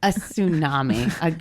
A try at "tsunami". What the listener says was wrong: T is silent, buddy.